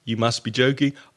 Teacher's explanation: it's said with a lot of intonation showing a lot of surprise